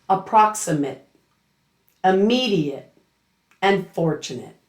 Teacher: the ATE ending becomes a weak it sound rather than a full ate pronunciation. Note that you should not hear the A clearly in the ending.